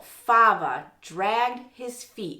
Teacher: You're starting with fava. And that, of course, is stressed on the first syllable.